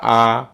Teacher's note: বিবৃত তাহলে আপনি এই আ বর্ণটা এখন উচ্চারণ করেন তো আ তার মানে আ বর্ণটা উচ্চারণ করলে জিভাটা কোথায় একবারে নিচে নামতেছে আর মুখটা কি একবারে খোলা হচ্ছে তাহলে এই যে ঠোঁট দুইটা কি একবারে ফাঁকা হয়ে যাচ্ছে তাহলে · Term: নিম্ন এবং বিবৃত